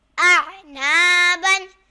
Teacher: یہاں الف سے پہلے زبر آ رہا ہے تو الف مدہ ہوگا اور اسے ایک الف کی مقدار کھینچ کر پڑھیں گے